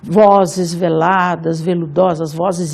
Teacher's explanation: Somado a esse V, que é uma consoante fricativa, a gente tem o som sibilante dos S's e Z's. No conjunto, durante a leitura, talvez vocês tenham percebido, no conjunto a gente tem uma sonoridade extremamente fluida, extremamente suave, que é para enfatizar a ideia de lamento, de choro, de violões que choram.